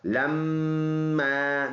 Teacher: میم مشدد میں ایک الف کے اندازے سے غنہ ہوگا